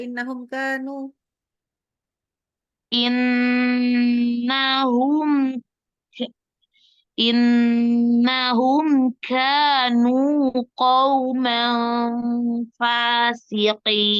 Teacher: Hati-hati ya kafnya supaya nggak hams yang berlebihan. Oke. Kafnya kadang-kadang agak lebih dikit.